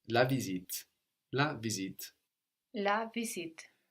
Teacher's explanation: We notice that the S sounds like a Z here, like in English. Visit. That's a Z sound.